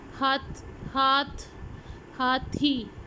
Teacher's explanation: The tongue tip is touched to the upper teeth. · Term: डेंटल साउंड्स